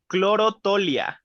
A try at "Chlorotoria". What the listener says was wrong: No, without the L.